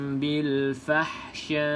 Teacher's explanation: pastikan Hamzah bunyi walaupun kita berhenti dekat sukunkan Hamzah tersebut